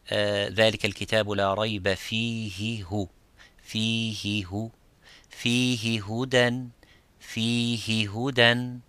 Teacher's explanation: The same level, the same time you give for the ha with the kasra is the same as you give it for the dhamma.